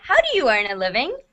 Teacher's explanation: because this is a question, as you are reaching the end of the sentence, the pitch of your voice has to go up.